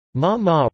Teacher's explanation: Ma ma, rising pitch, means hemp